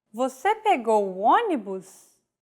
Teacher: it like it's basically a statement like the previous phrase with a question mark at the end and a raised intonation